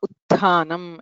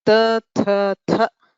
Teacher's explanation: खरः विवाराः श्वासाः अघोषाश्च महाप्राणत्वम् अपि अस्ति। अतः विवार श्वास अघोष महाप्राण प्रयत्नयुक्तः थकारः आदेशः भवति। उत्थानम् इत्यत्र त थ थ थकारद्वयम् एकः तकारः।